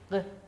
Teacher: Г баягы өпкөдөн чыгып келе жаткан аба ооз көңдөйүндө тилдин түбү менен айтылып атат. Г деп. Көрдүңөр, бул үнсүз экен.